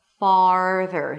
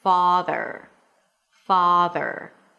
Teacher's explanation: Notice that my lips are a little more rounded for the ah sound. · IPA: fɑːrðər